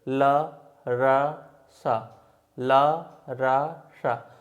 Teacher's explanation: तो देखिए इनमें हम मसूड़ों का प्रयोग कर रहे हैं, तो इन सभी को वर्ष व्यंजन कहा जाता है, ला, रा और सा को।